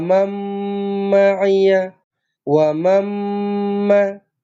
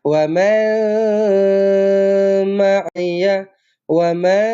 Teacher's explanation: Bila jumpa dengan mim sabdu, maka terus dirapatkan bibir. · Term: idgham ma'al gunnah